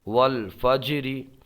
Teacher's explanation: یہاں پر جیم میں قلقلہ ہوگا ایک الف یہاں پر بھی یہ آواز پلٹ کے آئی ہے